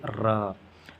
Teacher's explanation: प्रकंपित या लुंठित जो जीभ में अत्यधिक कंपन होता है